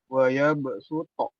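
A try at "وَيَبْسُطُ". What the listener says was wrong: Dibaca lebih tipis lagi. Su. Supo. Jadi huruf sin dan huruf shad itu bedanya sedikit aja.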